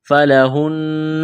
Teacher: نون مشدد پر غنہ کریں گے، آواز ناک میں چھپائیں گے ، ثلثا، سا کو نرم کرنا ہے، یہاں الف مدہ ہے،